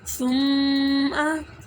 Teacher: आपने जो मीम मुशद्दिद और नून मुशद्दिद है इसको एक अलिफ 2 हरकत के बराबर ही लंबा करना है और यहाँ पर गुन्ना करना है, नाक में आवाज़ लेकर जानी।